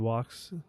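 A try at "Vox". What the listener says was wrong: Yeah, with a V, you're saying the V wrong. You're saying it as like a W. V.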